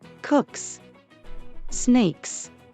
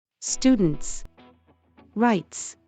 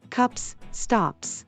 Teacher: if the last consonant of the word is voiceless then the S is pronounced as a normal s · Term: the S sound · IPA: /s/